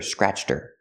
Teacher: Her is not a stressed word. So, the h is silent.